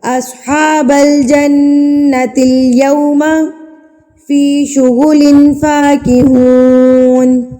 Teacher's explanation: نون مشدد اور میم مشدد پر غنہ کریں گے، یعنی کہ ان کی آواز کو آپ نے ناک میں لے کے جانا ہے اور اس کو روک کے رکھنا ہے ایک حرکت کے برابر